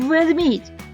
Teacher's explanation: у слові Ведмідь заховався дзвінки звук в